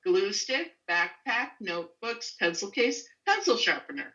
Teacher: We could work on the intonation of lists where we tend to have rising. · we stress the first word in the compound · We go glue stick, backpack, notebooks, pencil case, pencil sharpener when we're done with the list. So we have a pause, rising intonation within the list. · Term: compound noun